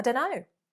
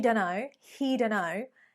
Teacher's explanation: we have omitted the T sound